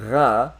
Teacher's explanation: going to be ra which is actually a rat but in in French you will see on my tongue my tongue isn't moving a single single bit I can just do all this with my mouth open the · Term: French R